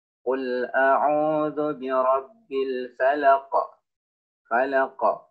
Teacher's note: sini berhenti di sini pada akhir ayat maka dia menjadi sukun maka cara baca qaf yaitu dengan diberikan pantulan suara karena dia merupakan salah satu huruf yang qalqalah yang memiliki pantulan suara contoh cara bacanya qul a'udzu birabbil falaq